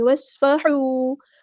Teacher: وصفحوا، ایسے نہیں، وصفحوا، واو کو ہم نے صاد کے ساتھ ملا دینا، حمزۃ الوصل ہمارا ڈراپ ہو جائے گا. صاد ہمارا ہیوی لیٹر پورا ادا کریں گے. حروف صفیریہ میں سے تو سیٹی بھی آنی چاہیے. ہا ہم مستحرک سے ادا کریں گے، اور واو مد آئی تو مد اصلی کریں گے.